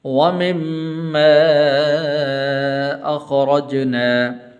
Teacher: را کے اوپر زبر ہے تو اس لیے اس کو پر کر کے پڑھیں گے